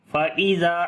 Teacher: ذال کو نرم پڑھیں گے، لمبا کریں گے، الف مدہ ہے